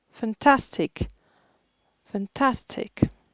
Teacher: C'est la deuxième syllabe qui est accentuée.